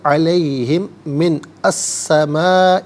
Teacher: علیہم میں میم ساکن ہے، اسے من کی میم کے ساتھ ملائیں گے اور میم کی آواز کو غنّے کے ساتھ ادا کریں گے